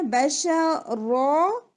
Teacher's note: अब hidden sound करेंगे, इख्फा करेंगे, और इख्फा कैसे होगा देखिए, पहले रॉ आपका हैवी होगा, बश रॉ, और फिर आपने पोजीशन लेनी है सीन की, बश रॉस।